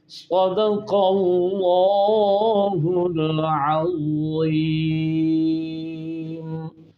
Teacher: صاد موٹا، بہت موٹا کر کے، اور سیٹی والی آواز · العظیم میں ضو سامنے سے، یعنی زبان کی نوک اور اوپر والے دانتوں کے کنارہ نرمی سے ان کو ملائیں، اور زبان کے درمیان اوپر کے تالو کو لپیٹے بھی، اور اس میں صفت رخوت آواز جاری بھی ہو۔